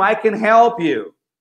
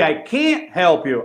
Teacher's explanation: Quando é positivo, o can passa até despercebido.